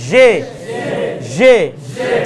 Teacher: জিহ্বার মাথা লাগবে না, জিহ্বার মাঝখান এটা উপরে লাগবে, মোটা হয়ে উপরে লাগবে